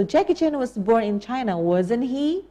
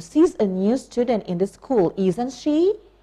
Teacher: We use falling intonation, okay?